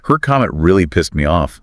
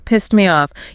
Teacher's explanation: You might barely hear that final T sound.